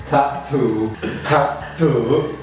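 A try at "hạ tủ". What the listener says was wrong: Okay, two strong T again. It's flat and up. Ha tu.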